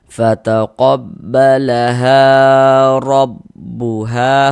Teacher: Nah, ada alif sebelumnya atau sebelah kanannya ada ini tanda baca fathah. Maka huruf tersebut dibaca panjang. Sehingga ha dibaca panjang. Mad thobi'i panjang dua harakat.